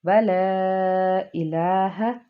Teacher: مد منفصل ہے، اور اس کو ہم دو الف کے برابر کھینچ کے پڑھ سکتے ہیں